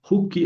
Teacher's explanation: se convirtió de o en u, pero en u breve